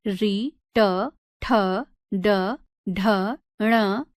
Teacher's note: मूर्धन्य कठोर तालु के अगले भाग से